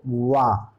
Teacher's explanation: वा के उच्चारण में दोनों अधर पास आते हैं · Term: अर्धस्वर